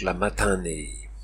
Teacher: le N nazalise le I qui précède même si ce n commence la syllabe finale